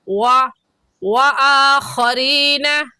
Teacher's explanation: दोनों होठों को गोल करने से व अदा होता है। तो ऐसे कहेंगे व आ खरीना व के नीचे ज़ेर है। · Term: वाव